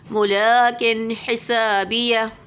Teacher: ملاکن پہ تنوین کے بعد ہا آ رہا ہے تو اظہار ہو رہا ہے